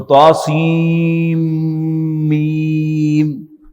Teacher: نون کی آواز اگلے حرف کی آواز میں مرج ہو جاتی ہے، ادغام ہو جاتا ہے اس کا. تو سین اس کے آخر میں نون کی آواز ہے سین.